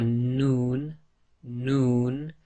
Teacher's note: So again, the tip of the tongue pressing on the front hard palate. Your lips actually go a bit round with the Noon